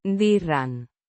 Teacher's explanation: With a soft D. and a slightly rolled R.